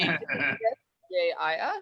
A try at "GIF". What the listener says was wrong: It's like gift. Hard G. Gift. Graphics interchange format. Graphics interchange format. Gift.